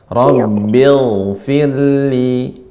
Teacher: Ghain ini dia mengalir, ya, rakhawah